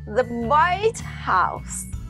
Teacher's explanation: This specific reference to the White House in Washington, D.C., is a compound noun with emphasis on White.